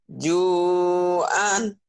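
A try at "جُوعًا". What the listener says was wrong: Ju'an. Ain harus keluar. Ju'an.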